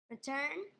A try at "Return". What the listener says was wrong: That sounded like a question because your voice went up.